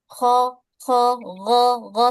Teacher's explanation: huruf kho dan huruf ghain ini sama-sama huruf yang tebal